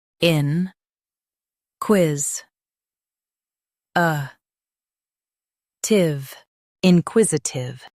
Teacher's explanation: Emphasize quiz and soften tive.